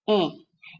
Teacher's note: o único som produzido com essas duas letras é o som da vogal nasal E